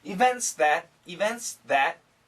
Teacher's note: the S kills the T